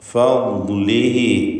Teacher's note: മിൻ ഫദ്ലിഹി ഫദ്ലിഹി ദ്വാദിൻ്റെ ഉച്ചാരണമാണ് പ്രത്യേകം ശ്രദ്ധിക്കേണ്ടത്. നാവിൻ്റെ ഒരു സൈഡ് നീളത്തിൽ മേലെ അണപ്പല്ലിനോട് ചേർത്താണ് ദ്വാദ് ഉച്ചരിക്കുക. അപ്പോൾ ഫദ്ലിഹി റഖാവത്തുള്ള അക്ഷരമാണ്.